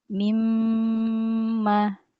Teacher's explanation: merapatkan kedua bibir ya tanpa tanpa ditekan, disertai keluarnya gunnah dari rongga hidung.